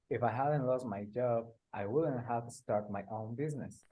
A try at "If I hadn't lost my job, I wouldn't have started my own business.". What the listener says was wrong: Good. Just try and put the id on the end of started, yeah? Started.